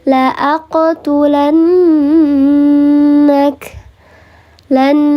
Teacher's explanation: Maka di sini namanya adalah ghunnah musyadadah. Dibacanya dia di dengungkan tiga harakat tingkatannya.